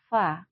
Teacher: ya Fa karena huruf Fa itu termasuk huruf hams maka ee ada sedikit udara yang mengalir ketika kita mengucapkan huruf Fa